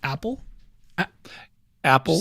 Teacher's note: you can feel how you constrict your your throat just before you say that a